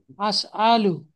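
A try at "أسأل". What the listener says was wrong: হ্যাঁ, টান হবে না, সুন্দর করে একটু বলেন। আস আলু। হ্যাঁ, এক টানে বলেন আস আলু।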